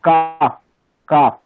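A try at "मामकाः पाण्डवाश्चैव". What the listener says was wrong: না, আপনি ফকারটা বাদ দিচ্ছেন কেন? কাপ উচ্চারণ করেন তো, ইংলিশে কাপ শব্দ আছে, তাহলে কাপ শব্দের ফকারের জায়গায় আপনি ফকার কল্পনা করে উচ্চারণ করুন। কাপ, কাফ, এরকম হবে না? কাফ, মাম কাফ পাণ্ডবাশ্চৈব।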